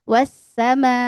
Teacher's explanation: Nah, ini namanya mad wajib muttasil. Wajib itu harus mad panjang muttasil karena tersambung